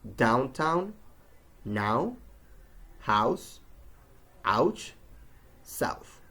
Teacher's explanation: Out, as in out or down, is made by combining a, as in hat, and closing it with a W sound